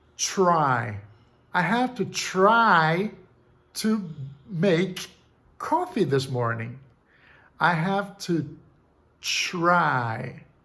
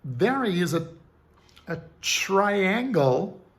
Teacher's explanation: O fato é que palatalizar é você colocar a língua numa posição mais posterior, neste caso, partindo dos alvéolos para o palato duro. Então, o T diante de R, ele pode ser palatalizado e assumir o som de ch, como em chair